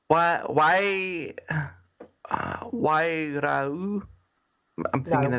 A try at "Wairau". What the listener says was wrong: Wairau. You don't pronounce the U on the end. Wairau.